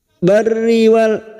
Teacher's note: ra kita baca tarkik atau tipis karena ra kasroh.